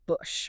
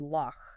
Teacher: So you are literally rubbing air against the back of your palate. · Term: velar fricative